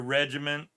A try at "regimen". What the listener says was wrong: There's no T in that word. I said there's no T in that word. You said regiment. You did.